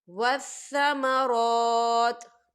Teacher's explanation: تو آپ یہاں وقف کریں گے اور تا جو ہے وہ ساکن ہو جائے گا۔